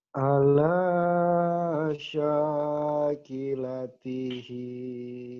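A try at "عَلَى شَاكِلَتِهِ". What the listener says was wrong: iya, tinggal dicepetin aja. Ala syakilatihi.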